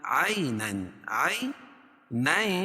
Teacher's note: عَيْنًا، عَيْنًا، یا ساکن سے پہلے عین کے اوپر زبر ہے تو یا لین، اس کو نرم آواز کے ساتھ جلدی ادا کریں گے